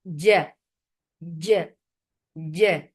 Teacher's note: Ja has no sound of cha into it. So when you are pasting your middle part of your tongue to the palate, that is making jim without any flow of breath or sound